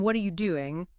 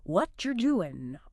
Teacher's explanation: pronouncing every single sound in what are you doing distinctly instead of the more natural, relaxed what you're doing